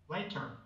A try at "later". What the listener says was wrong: More relaxed at the end, later. Like, leave it open, later.